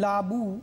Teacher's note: এই রস্ব উটা কিন্তু পূর্ণাঙ্গ রূপে উচ্চারিত হচ্ছে